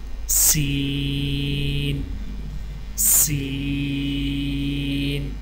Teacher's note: سین کی ادائیگی میں زبان کی نوک کو سامنے والے نیچے کے 2 دانتوں کے کناروں سے مضبوطی سے لگا کر باریک اور سیٹی جیسی آواز میں پڑھیں